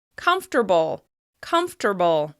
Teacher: that second syllable has completely disappeared in natural pronunciation